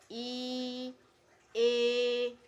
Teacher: dibedakan atas tiga juga yang pertama vokal depan vokal depan yakni vokal yang dihasilkan oleh gerakan turun naiknya lidah bagian depan